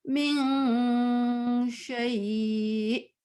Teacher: نون جب آتا ہے نا اور اس کے بعد شین آتا ہے تو ہم نون غنہ سے بنا کے نا تھوڑا لمبا کرتے ہیں کھینچتے ہیں